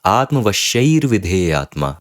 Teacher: So atmavashaihi vidheyatma becomes atmavashair vidheyatma. So the visarga changes into refa. Okay, that is why it is also called as refa sandhi or rutva sandhi.